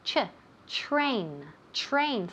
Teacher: TR sounds like ch.